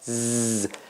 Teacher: the tongue is not out z but it is it is attached to the upper teeth